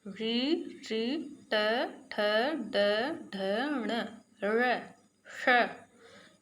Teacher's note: इनका उच्चारण हमारे मूर्धा से होता है